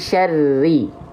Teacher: huruf ro nggak boleh getarannya banyak-banyak teman-teman